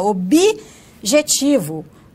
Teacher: Assim como em objetivo, né? Ele vai acrescentar o I na sua fala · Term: processo de inserção